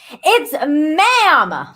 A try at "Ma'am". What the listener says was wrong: Ma'am, you gotta add emphasis on that. Be indignant.